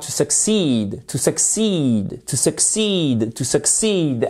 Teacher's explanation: À accent tonique sur la seconde syllabe.